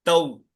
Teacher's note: इसमें आपको किस बात का ख्याल रखना है कि वाऊ और या की साउंड पूरी आना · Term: मारूफ अदागी